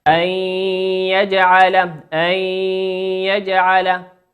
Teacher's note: والياء من حروف الإدغام بغنة، يغن بمقدار حركتين